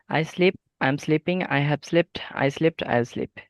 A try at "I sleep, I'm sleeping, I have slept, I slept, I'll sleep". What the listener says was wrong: Good. 4 again. Very good.